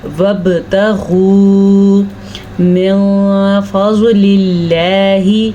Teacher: لفظ اللہ کو ہم باریک پڑھیں گے کیونکہ اس سے پہلے زیر ہے، جبکہ ضاد کو ہم پر پڑھیں گے کیونکہ ضاد حروف مستعلیہ میں سے ہے